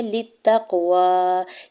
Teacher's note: لِلتَّقْوَىٰ، یہاں پر بھی لام کی زیر کو تا مشدد کے ساتھ لِلتَّقْوَىٰ تا مشدد کے ساتھ ملاتے ہوئے پڑھیں گے، اور تا کے زبر کو قاف ساکن کے ساتھ ملاتے ہوئے قاف ساکن پہ کلکلا کرنا ہے